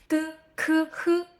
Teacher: G, k, h. All three of these start with the back of your tongue, rising towards the soft area at the back of the roof of your mouth. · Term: 舌根音